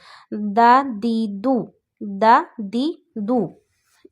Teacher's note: پھر دال ہے، دال وہیں سے ادا ہوتا ہے جہاں سے تا ادا ہوتا ہے، آپ نے زبان کی نوک اوپر والے دانتوں کی روٹس پہ لگانی ہے اندر کی طرف